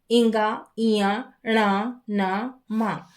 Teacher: अपने स्वयं के स्थान और उसके साथ में नासिका से इनका उच्चारण होता है। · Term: नासिकास्थाने